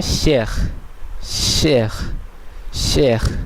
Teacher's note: এই শেষে এ পর্যন্ত উচ্চারিত হলো, কিন্তু সর্বশেষ এসটি উচ্চারিত হলো না